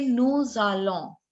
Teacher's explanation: So the sound of S gets carried forward with the next word's vowel.